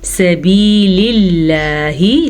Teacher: لفظ اللہ سے پیچھے زیر ہے تو لفظ اللہ کو ہم باریک پڑھیں گے